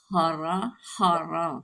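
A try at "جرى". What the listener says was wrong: Jaro. Titiknya di bawah.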